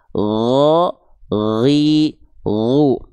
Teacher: Kalau huruf gin dia hanya mengalir suara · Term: huruf ghain